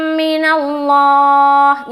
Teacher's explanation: यहाँ पर लफ्ज़ अल्लाह का लाम को पुर रखेंगे क्योंकि नून के ऊपर क्या है, ज़बर है